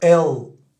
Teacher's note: le l à l'américaine il va venir se coller aux dents du haut les dents du haut de devant